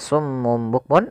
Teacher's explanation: Kita balikkan suara nunnya menjadi suara mim Tum sambil ditahan gunahnya kemudian bilfirin di sini ada alif lam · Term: iqlab